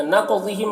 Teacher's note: قاف کو پر پڑھیں گے، حروف مستعلیہ میں سے ہے، اور قاف میں قلقلہ کریں گے